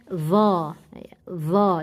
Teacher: Fadhallat, dha, jangan dibaca dho, tidak vokal o, vokalnya tetap a, dha, tidak perlu monyong, membaca huruf tebal